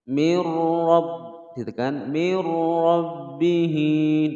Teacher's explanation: nun sukun bertemu dengan ra masuk tanpa dengung, bukan mir tapi mir rabb langsung ya, nunnya dimasukkan ke huruf ra tapi tidak dengung.